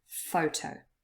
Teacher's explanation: photo consists of two syllables, but only the first one is stressed. We say photo. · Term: word stress